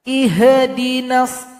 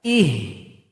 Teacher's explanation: ha yang sukun tidak boleh juga tawallud dipantulkan.